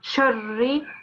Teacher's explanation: So here, first of all, you've got a ra mushaddad. So you have to connect the sheen with the ra mushaddad as well